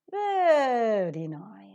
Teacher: when you give a rising tone a sort of anger and disagreement